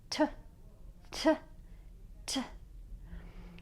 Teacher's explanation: the consonant T is a stop that is made by putting the tongue on the alveolar ridge. That's the little ridge that you have that's behind your front teeth.